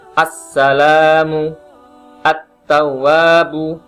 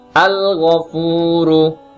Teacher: Karena suara alif lam yang ada di huruf syamsiyah itu diidghamkan ke dalam huruf syamsiyah yang ada di hadapannya, sehingga suara alif lam yang ada di huruf syamsiyah tadi menjadi lebur karena dimasukkan dengan huruf syamsiyah tersebut. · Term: idgham syamsiyah